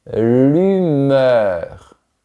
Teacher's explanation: Ici, la langue reste devant.